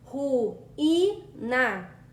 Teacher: o U ele se separa do I, fazendo um hiato. Por isso, o I é acentuado.